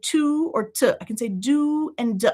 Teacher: So we very commonly reduce this vowel oo down to schwa